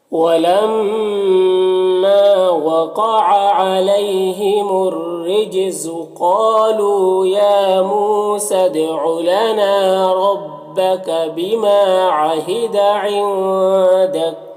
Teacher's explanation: نون ساکن کے بعد دال ہے حروف اخفا میں سے تو نون میں اخفا ہوگا